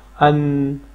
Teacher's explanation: نون کا جو ہے یہ آواز جو ہے ناک میں آ رہی ہے، خشوم وہاں پہ، یہ دیکھیں یہاں پہ یہ جو جگہ ہوتی ہے اس کو خشوم کہتے ہیں، یہاں پہ یہ آواز جاری رہ رہی ہے، ان، حمزہ نون زبر ان۔